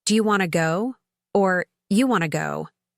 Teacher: The do you blends together and want to becomes wanna.